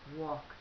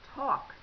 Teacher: So the ed makes a t sound. These words are called unvoiced because they do not make your vocal cords vibrate.